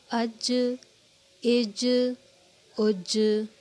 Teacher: ساکن ہونے کی صورت میں جیم پہ قلقلہ ہوگا، یعنی کہ آواز پلٹے گی یا باؤنس کرے گی۔ اج، اج، اج، یعنی کہ جیم حروف قلقلہ میں سے ایک حرف ہے۔